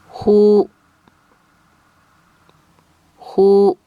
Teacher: this sound is also similar to the English H like hurry but it can seem harsher than the English H sound